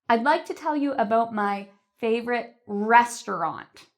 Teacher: notice how I said the word restaurant louder and longer